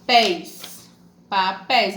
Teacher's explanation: uma palavra com 2 sílabas. A sílaba mais forte, pés. Então, aqui, ó, oxítona para oxítona.